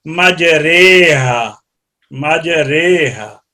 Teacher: اور کسرہ اور نہ یا خالص پڑھی جائے گی، بلکہ فتح کسرہ کی طرف اور الف یا کی طرف مائل کر کے پڑھا جائے گا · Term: امالہ